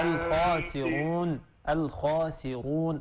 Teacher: فخم الراء، الخاسرون، الخاسرون، الراء مفخمة